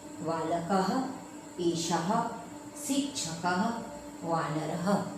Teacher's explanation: यानी बच्चों, इस फर्स्ट पॉइंट में आपको जानना है कि जब इसमें विसर्ग दिया जाता है तो इसका उच्चारण हा में होता है